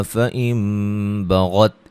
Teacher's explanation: یہاں نون ساکن کا اقلاب ہے، نون کو میم سے بدل دیں گے